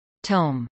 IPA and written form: toʊm (tome)